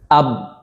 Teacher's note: Sifat yang berlawanan huruf ba jahar diucapkan dengan jelas dan juga diucapkan dengan keras. Tertahannya aliran nafas atau udara saat mengucapkan huruf ba. · makhraj huruf ba kedua bibir ya, syafatain tepatnya dengan cara mengatupnya atau menekan bagian dalam perut bibir nih.